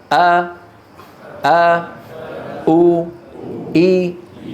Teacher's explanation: يكون الوتران ملتصقان ثم يبتعدان عن بعضهما فتخرج الهمزة المتحركة